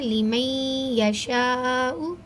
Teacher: لیمئی نون ساکن کے بعد لفظ یا آ رہا ہے تو اس وجہ سے ہم یہاں پہ دو الف کے برابر لمبا کر کے پڑھیں گے اور اپنی آواز کو ناک میں چھپائیں گے یعنی غنّہ کر کے پڑھیں گے